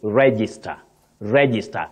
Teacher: you have the stress right at the onset the beginning of that word